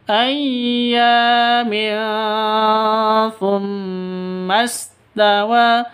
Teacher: Tanwin bertemu dengan tsa. Cara bacanya samar didengungkan. Siap-siap ke huruf tsanya karena bacaan ikhfa hakiki.